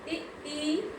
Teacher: जैसे इ ई, इसमें अग्र, जीभ का आगे वाला भाग यूज हो रहा है, प्रयोग हो रहा है